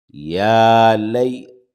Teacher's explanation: یا ساکن سے پہلے زبر ہے نرمی سے جلد ادا کریں گے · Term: حرف لین